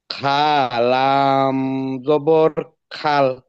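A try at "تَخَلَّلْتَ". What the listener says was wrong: খা না, এটা খ। খলাম জবর খল। তাখল্লাত।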